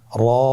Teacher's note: মোটা করে উচ্চারণ করব। এবং র হরফটি এক আলিফ টেনে পড়ব।